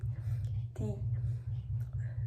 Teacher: saying T by placing the tongue behind the upper front teeth